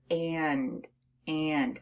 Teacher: when you have a short a and an N it sounds like it's coming through your nose which is why when we say the word and you actually · it sounds like it's coming through your nose which is why when we say the word and you actually feel a little bit of a buzzing in your nose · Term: nasalized a